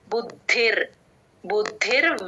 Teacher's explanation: కలిలం బుద్ధిర్వ్యతి తరిష్యతి బుద్ధిర్ ద కి మహాప్రాణం ఉందండి గమనించండి ద కింద ద ఒత్తు మహాప్రాణం రెండు పడేటట్టు చెప్పాలి